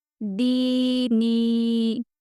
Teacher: یہاں ہم نے دونوں کو کھینچ کر پڑھا ہے، کیونکہ یہاں پر زیر کے ساتھ دونوں جگہ بھی یا مدہ ہے۔